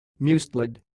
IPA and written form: ˈmʌstɪlɪd (mustelid)